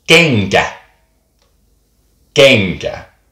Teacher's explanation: The N and K kind of mush together into the k, nk sound.